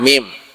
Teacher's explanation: Mim itu di perut bibir bagian tengah, mim.